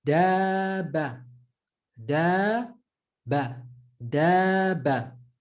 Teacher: However, when we add the alif mad, we said the alif mad extends the a sound, extends the fatha to become a